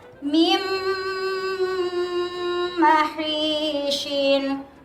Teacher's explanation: Sebabnya nun sukun bertemu dengan mim. Jadi dimasukkan bunyi nun sukun ke dalam huruf mim disertai mendengung selama 1,5 alif atau 3 harokat